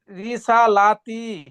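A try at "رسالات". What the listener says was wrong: হ্যাঁ, তা টান হবে না। রিসালাতি, কি পড়বেন? তি টানছেন কেন? তি, তি তাড়াতাড়ি পড়েন। তি টান হবে না।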